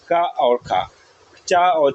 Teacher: ए को हम लोग बोलते हैं अघोष व्यंजन। अघोष मतलब नो वाइब्रेशन होती है कंठ में।